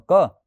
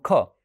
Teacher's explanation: જ્યારે બોલશો ત્યારે તમારા હાથની આગળ હથેળીમાં હવાનો સ્પર્શ થશે પણ ક બોલો ત્યારે હવા ઓછી બહાર આવશે એટલે અલ્પપ્રાણ છે અને ખ બોલો તો હવા વધારે બહાર આવશે એટલે કેવો છે ખ મહાપ્રાણ છે તો